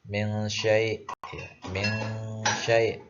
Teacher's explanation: Artinya apabila ada nun mati atau tanwin bertemu dengan ke-15 huruf ini, maka cara membacanya adalah dengung, tapi dengungnya tidak terlalu, tidak seperti itu ambiguna. Dengungnya lebih kepada samar-samar. Contohnya nun mati bertemu shin. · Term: Ikhfa hakiki